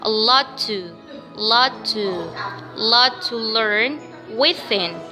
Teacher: Double T meet here, we directly connect it to be one only T.